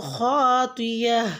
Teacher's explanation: گول تا پہ جب ہم وقف کرتے ہیں تو ہا ساؤنڈ کے ساتھ اس کو ختم کرتے ہیں، یعنی کہ خاطیاتین وقف کریں گے تو خاطیہ۔